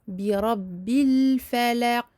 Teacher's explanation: La qalqala de fin de verset est en fait plus exagérée que la qalqala en milieu de lecture.